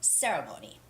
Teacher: And the word ceremony, you see it very often, but it's not ceremony, it's ceremony with the first syllable stress